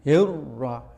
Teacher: Ro yang kedua adalah tebal, maka nir ikut tebal ya. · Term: idgham